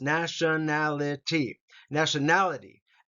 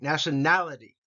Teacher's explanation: the emphasis is on nality